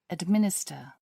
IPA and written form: ədˈmɪnɪstə (administer)